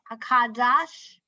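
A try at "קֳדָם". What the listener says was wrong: This is a final. Kadam. This is final mem.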